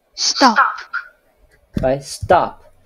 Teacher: The T sound in stop is unaspirated. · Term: unaspirated T